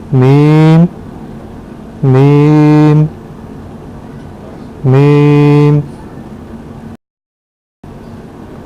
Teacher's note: یہ دونوں ہونٹوں کے خشک حصہ سے ادا ہوتا ہے۔